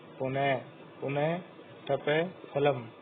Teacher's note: जब विसर्ग के बाद प, फ वर्ण रहते हैं तब अर्ध विसर्ग उच्चारण होता है